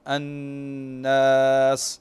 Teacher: طيب، كمثلا تخليص حرف المد من الغنة نحو كلمة الناس، فلما ننطق هذا المد فيجب أن نخلص هذا المد من الغنة